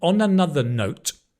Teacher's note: Onah-nother note, emphasis on the note.